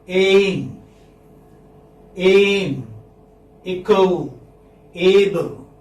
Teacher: here your sound changes from one vowel sound to another. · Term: diphthong